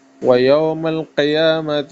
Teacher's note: قیامہ میں قاف کو منہ بھر کے پڑھنا ہے